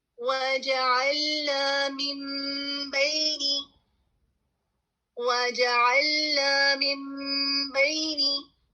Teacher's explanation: جب آپ میم کہہ رہے ہیں تو آپ کی دونوں ہونٹ مل رہے ہیں, اور اس کے بعد با آ جاتا ہے تو آپ کی ہونٹ کھل جاتی ہے. اور اس کے ساتھ ہی آپ نے غنہ کی ادائیگی بھی کرنی ہے. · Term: اقلاب